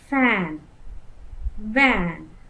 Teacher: my lower lip is moving against the upper row of teeth and then my lower lip is moving against the upper row